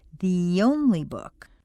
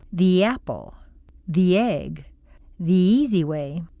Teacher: the schwa of the turns into a long e plus a connecting y